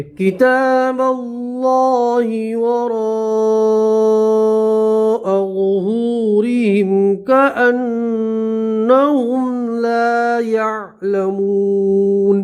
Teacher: نون کے اوپر تشدید ہے تو غنہ کریں گے، مد متصل ہے 5 الف مد کریں گے